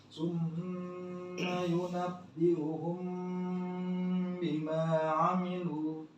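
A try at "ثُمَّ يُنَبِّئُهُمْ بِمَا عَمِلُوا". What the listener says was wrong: Lu-nya panjang, sempurnakan. Amilu.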